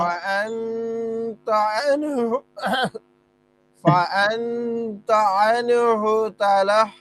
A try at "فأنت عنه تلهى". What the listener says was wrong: হ্যাঁ তালাহ এটা একটু নরম তালাহ গলা ছেড়ে তালাহ হ্যাঁ তালাহ